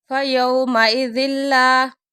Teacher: تنوین کے بعد لام آ گیا، غنّے کے بغیر ادغام ہے